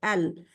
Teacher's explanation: तो इस तरह मुंह खुले के साथ अल, लेकिन जुबान की नोक ऊपर के 8 दांतों के जड़ से लग जाती है जाके, अल। ये जो है इसमें गलती बहुत सारे लोगों की होती है। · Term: लाम